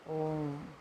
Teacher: जिसमें 3 गुने से भी ज़्यादा समय लगता है उसको हम क्या बोलते हैं, प्लुत स्वर कहते हैं